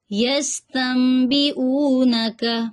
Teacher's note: یستنبئونک میں سین میں سیٹی آ رہی ہے اس میں سیٹی کی آواز لائیں